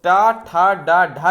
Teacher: और टा ठा डा ढा जो दिया हो, इसका होता है उच्चारण स्थान मूर्धन्य